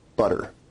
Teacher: notice where we write it with two T's in English that your tongue is producing a tap sound there rather than a full stop or plosives sound